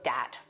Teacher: using something like a D sound for where you see a written TH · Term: TH stopping